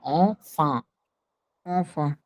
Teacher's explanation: एन के बाद दोनों जगह वॉवेल नहीं है, तो दोनों जगह नेजल साउंड होगा